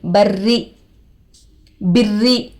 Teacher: रो पर तशदीद आकर है, दो मरतबा पढ़ेंगे. एक पिछले वाले हरफ से, एक खुद से. · रो पर तशदीद आकर है, रोए मुशद्ददा होगा. रोए मुशद्ददा के नीचे जेर आकर है, रो को बारीक करके पढ़ेंगे